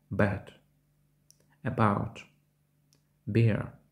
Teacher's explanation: Схоже на український звук «б», тільки він дзвінкіший, та також вимовляється дещо з придихом